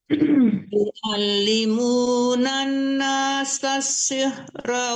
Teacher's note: Yu'allimunan nasas, langsung ditekan ke sin yang tasdid itu.